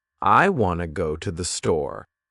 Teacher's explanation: Notice how wanna and store are stronger, and the other words are softer. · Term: sentence stress